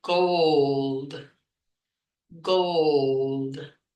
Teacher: really notice if you have that really open oh sound generated from the throat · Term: dark L